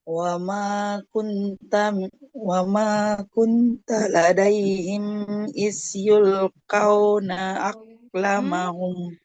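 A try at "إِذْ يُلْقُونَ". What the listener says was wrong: Iz yulquna. Iz bukan is ya, hati-hati. Jangan kesa. Iz. Tahan aliran nafasnya. Iz yulquna. Makronya sudah tepat, Ibu. Tinggal ini sifatnya.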